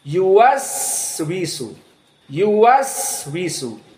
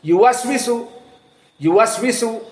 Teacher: Huruf rakhawah sehingga dia dalam keadaan panjang sedikit ada desisan